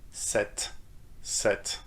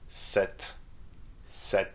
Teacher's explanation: you shouldn't pronounce the p, but you need to pronounce the t at the end